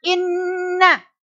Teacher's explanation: nun itu agak ditekan dan didengungkan. Nah, dengungnya gimana? Sampai pada hidung. Ditekan sampai 2 harokat. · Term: bacaan gunnah